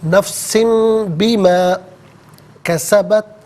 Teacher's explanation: تنوین یا نون ساکن کے بعد اگر با آ جائے، تنوین کو یا نون ساکن کو میم سے چینج کر کے میم کی آواز کو غنے کے ساتھ ادا کرتے ہیں